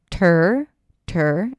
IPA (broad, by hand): tɝː